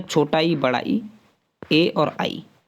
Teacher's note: अच्छा, अग्र स्वर की बात करें हम, अग्र स्वर होते हैं, अग्र का मतलब है ये 3 अग्र, पश्च और मध्य जो हैं ये जिह्वा के आधार पर होते हैं, यानी जीभ के आगे वाले भाग से बोले जाने वाले जो हैं वो है छोटा ई, बड़ा ई, ए और आई